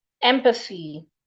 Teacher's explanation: It's a voiceless TH.